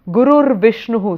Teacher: the visarga becomes a rakara